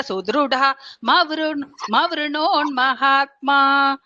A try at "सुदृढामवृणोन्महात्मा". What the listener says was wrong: சுத்ருடாம்னு சொல்லிட்டேன்னா மவருணோன்னு வரக்கூடாது. சுத்ருடாம்னா அவ்ருணோன்னு தான் வரணும். இல்லைன்னா கனெக்ட் பண்ணி சொல்லணும்.